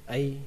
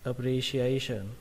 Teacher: A nó phải to hơn những cái âm khác. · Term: trọng âm chính